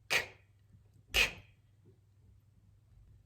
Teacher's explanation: the K is the back of the tongue really coming up against the soft palate